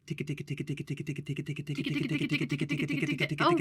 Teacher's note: some fun practice trumpet players call this double tonguing it's to articulate the tongue in the front with the tip of the tongue for the T and then a K sound with the back